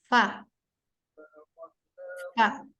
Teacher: bibir bagian bawah bertemu dengan ujung gigi seri bagian atas. Dan dia agak dalam. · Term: makhraj fa